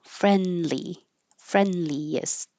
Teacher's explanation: Friendliest, 3 syllables. Friendliest. You won't hear a D at all.